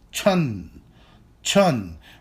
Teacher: a second tone character meaning that it is basically a rising tone